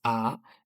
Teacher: The second tone is a rising tone. It's from bottom to top